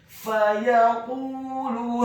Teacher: huruf qafnya dibaca tafkhim tebal dhammah dua harokat karena setelahnya ada huruf waw sukun. · Maka huruf H-nya dibaca tafkhim tebal fathah 4 sampai 6 harokat. Kemudian huruf alif atau hamzahnya dibaca tipis, dhammah 1 harokat.